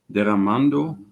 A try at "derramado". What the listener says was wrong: Very good. I think you said derramando, but it's derramado. So it's past tense, not the